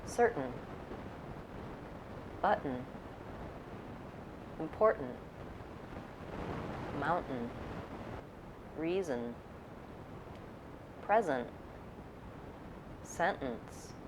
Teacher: have noticed I don't use an aspirated T in these words I use a stopped T where I go up to form the T sound and I don't release the air I release right from the T to the syllable n but · you might have noticed I don't use an aspirated T in these words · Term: syllabic n